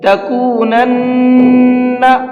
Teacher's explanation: نون کے اوپر تشدید ہے تو یہاں پر غنہ کریں گے